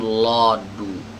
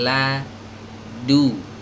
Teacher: lanya sempurna dan harus tipis ya, jangan lodu tapi ladu, huruf dalnya juga tipis.